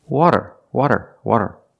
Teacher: it's not a rolled R it's a flap t or a fast D